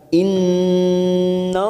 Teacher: Innallaha yuhibbul mutawakkilin. Innallaha, nun yang bertasdid gunnah musaddadah kita tekan selama 3 harakat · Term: tafkhim